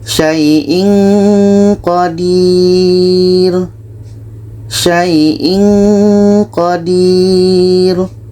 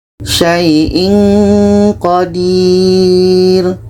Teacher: Ketika kita baca tanwin, kita sudah merasakan huruf qa. Maka seperti ada bunyi eng.